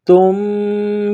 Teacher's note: یہاں آواز ناک میں چھپائیں گے، غنہ کریں گے